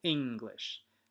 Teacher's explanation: even the word English, you'll notice that we stress the first syllable, English. In Japanese, it doesn't work that way.